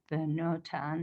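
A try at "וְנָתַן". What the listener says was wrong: Vanatan. Not no. Vanatan.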